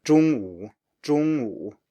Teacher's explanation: first tone plus third tone, so that's a high tone plus a low tone